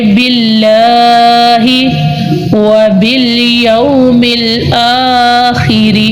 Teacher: रा को हम बारीक पढ़ेंगे क्योंकि रा के नीचे ज़ेर है · हम लाम को एक अलिफ की मिकदार में लंबा करेंगे